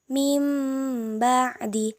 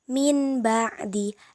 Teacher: menyuarakan bunyi nun sukun atau tanwin menjadi suara mim dengan merapatkan dua bibir disertai dengan dengung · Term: iklab